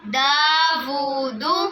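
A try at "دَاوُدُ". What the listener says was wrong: دا کو بھی لمبا کرنا ہے، وو کو بھی لمبا کرنا ہے، اور آگے والی جو دال ہے اس کو لمبا نہیں کرنا۔ دا وو دو،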